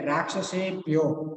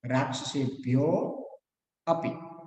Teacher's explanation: છે એ ઓ વર્ણના પાછળનો અ એ વર્ણ ભળી ગયો તેથી જ્યારે પણ ઓ વર્ણનું જ્યારે આપણે ઉચ્ચારણ કરવાનું થાય ત્યારે ઓ વર્ણ ઉપર થોડોક ભાર આપવાનો છે